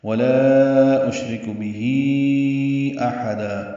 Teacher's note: حمزہ اقصی حلق سے ہا وسط حلق سے ادا کریں گے اور دن کی جگہ دا پڑھیں گے، الف مدہ مد عوض ہوگی۔